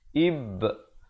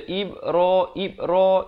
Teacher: Jadi ba itu kita tak buat-buat, dia bunyi sendiri bila kita lepaskan genggaman huruf ba itu. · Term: qalqalah